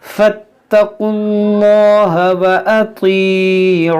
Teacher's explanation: आइन को वस्ते हल्क से अदा करेंगे।